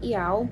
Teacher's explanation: Bunyi paling nyaring berada di puncak suku kata, yaitu pada vokal buka A. Bunyi I dan U terdengar ringan dan pendek. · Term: triftong